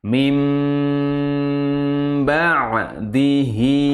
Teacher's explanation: mimnya bersembunyi kepada huruf ba mim ba'diihi dengan cara merapatkan bibir sekali lagi sat du mim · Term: iqlab